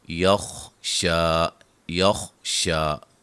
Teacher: خا کو موٹا، شین پہ مد اصلی ہے